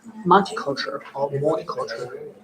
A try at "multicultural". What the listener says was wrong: Okay, so the first one you said sounds like this. Yeah, you gotta have the L in there. What you're saying sounds like this. Mutty.